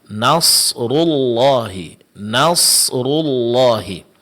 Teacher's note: yang ditebalkan di sini ada huruf shad dan huruf ra setelahnya karena huruf rnya berbaris depan. Sedangkan huruf nun sebelumnya ini tetap tipis. Jangan sampai terpengaruh oleh huruf shad. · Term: huruf yang ditebalkan